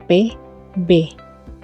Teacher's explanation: yang dihasilkan dengan udara mengalami hambatan contoh b d bunyi hambat kedua bibir terkatup saluran ke rongga hidung tertutup kemudian katup bibir terbuka tiba-tiba